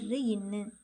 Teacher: ர் ன்னு ஆகிய இரு மெய்களும் மேல்வாயை நாக்கின் நுனி மிகவும் பொருந்துவதால் பிறப்பதுதான்